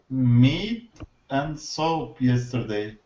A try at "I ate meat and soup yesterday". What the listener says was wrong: Beautiful. That was better. Okay. It sounded like you said meat and soap and soap. Okay, so I ate meat and soup yesterday.